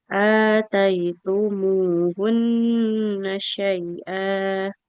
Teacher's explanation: ataitumuhunna nunnya nggak boleh panjang karena fathah tidak bertemu alif